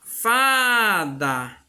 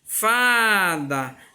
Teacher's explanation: Então, ó, o Fá eu falo com mais intensidade. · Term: sílaba tônica